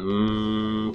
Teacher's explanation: It comes through your nose because it's a nasal sound and it's bilabial, it means both lips touch. So along the oral cavity, you have different parts of the mouth that can engage in the production of sounds.